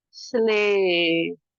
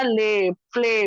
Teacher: वाई की आवाज क्या हो गई है यहाँ पे? ऑलमोस्ट खामोश, साइलेंट नहीं हुई है, लेकिन ऑलमोस्ट कम हो गई है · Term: लॉन्ग ए